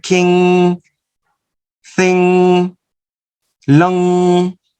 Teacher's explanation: the sound velar sound, nasal velar sound, as in the word king, thing, lung